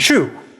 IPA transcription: ʃu